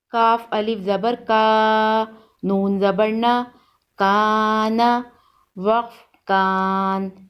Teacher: الف مدہ کو ایک الف کے برابر کھینچ کر پڑھتے ہیں